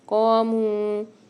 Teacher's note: قاموا، یہاں پر بھی قاف موٹا والا آ رہا ہے سب سے پہلے تو اس کو قاف کو موٹا پڑھیں گے اور 1 الف مدار کھینچ کے بھی پڑھیں گے کیونکہ یہ الف مدہ کے ساتھ آ رہا ہے۔